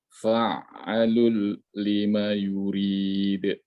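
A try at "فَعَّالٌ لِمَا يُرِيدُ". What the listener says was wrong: Nah, ain harus panjang. Fa'alul.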